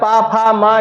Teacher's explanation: फा में ओठ का ही इस्तेमाल करना है हमको, फिर दांत वांत जीभ ऊब का कोई किसी का इस्तेमाल नहीं करना, है ना।